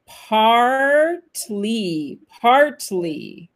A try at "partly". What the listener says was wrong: Partly. Faut bien qu'on entende le R, partly, OK? Parce qu'en British English, ça sera partly. On entend à peine le R. Partly. Talk like this. Partly. American English, c'est beaucoup plus prononcé. Partly, OK? Partly. Et avec la première syllabe qui est accentuée.